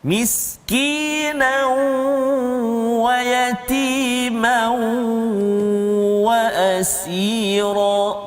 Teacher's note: Dia tak masuk secara sempurna, kan, masih ada tanwin dia, dan ada huruf waw dan berserta dengan dengung. Itu maksud idgham naqis.